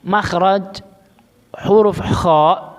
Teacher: Makhraj huruf kha itu ada di adna al-halq.